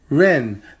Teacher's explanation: second tone character ren that's a rising tone and it means people person or even humans now our second